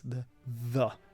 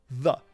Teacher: the voiced dental fricative is thethe in the word the.